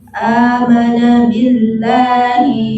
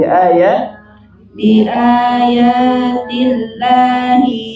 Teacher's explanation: ini lamnya tebal tipis. Tipis ya, sebelumnya kasrah.